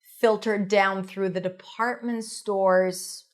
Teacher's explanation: Department store is a set phrase stresses on department.